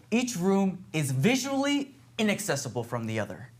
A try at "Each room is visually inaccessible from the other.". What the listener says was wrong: Yeah, you can't pause there. See, this is where when you have to listen to the rhythm of the play, we got to speed this up, okay?